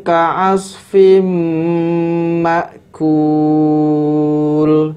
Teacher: tanwin bertemu dengan huruf mim hukumnya adalah Idgham Bighunnah sehingga dibaca dengan cara dimasukkan